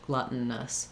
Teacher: So this vowel comes out and is a little bit of a schwa, or just glutton. I'm going very quickly, stopping that T and going right to the N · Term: syllabic N